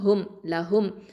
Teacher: இந்த லாம்ங்கிறது ஹஃபத்துல் லிசான் எழுத்து, நாவின் ஊரப்பகுதி எழுத்து.